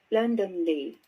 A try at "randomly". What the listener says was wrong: that is r not l